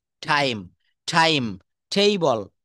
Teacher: টি কে আমরা যত জায়গায় টি আসবে কোনো ওয়ার্ডের, শব্দের প্রথমে যদি টি থাকে বা ট থাকে, আমরা সেটাকে ঠ উচ্চারণ করব।